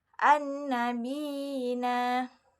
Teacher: di mana huruf ya yang pertama berharakat tasydid lalu kasrah. Sementara huruf yang huruf ya yang kedua berharakat sukun, maka cara membacanya sepanjang dua harakat. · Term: mad tamkim